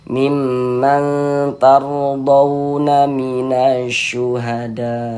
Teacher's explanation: huruf ra sukunnya itu dibaca tafkhim juga, dibaca tebal.